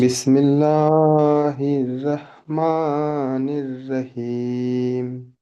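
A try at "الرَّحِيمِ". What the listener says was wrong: রাহিম নয়, রহিম। আমরা পড়েছি রয়ের উপরে জাবার অথবা পেশ হলে রপুর হয়। রহিম।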